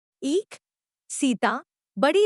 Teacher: यह संवृत दीर्घ अग्र स्वर है। इसके उच्चारण में जिह्वा का पिछला भाग बहुत अधिक ऊपर उठता है और होंठ चौड़ाई में खुल जाते हैं।